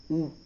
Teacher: तो छोटा उ को बोलने का स्थान जो होता है ओष्ठ होता है।